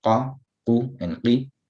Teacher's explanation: the qaf with the fatha will be more full, slightly less full with the dhamma, slightly less full with a kasra. That would be the lowest level, qi.